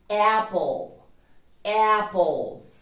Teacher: La A de manzana también suena muy similar a una E y hacemos el mismo truco. La E del final suprimida en la pronunciación y entre P y L agregamos O.